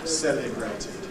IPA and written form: ˈseləbreɪtɪd (celebrated)